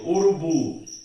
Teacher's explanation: sílaba tônica é a última, é uma oxítona, porém é terminada em U.